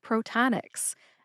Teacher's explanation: The second syllable does not have the n in it, believe it or not. It's ta like t a h t. · And the third syllable is nix, which is spelled N-I-X, but it sounds like the basketball team, the New York Knicks. Put all 3 syllables together and you get Protonix. Emphasize ta.